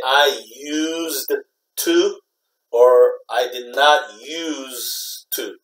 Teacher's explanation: when you say it fast you know you can't really hear that D so it sounds the same